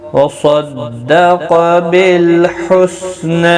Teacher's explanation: صاد قاف دونوں پر پڑھے جائیں گے، حروف مستعلیہ میں سے ہیں. حسنى نا کو ایک الف کی مقدار کے برابر کھینچ کر پڑھیں گے وقف کی صورت میں بھی اور ملانے کی صورت میں بھی.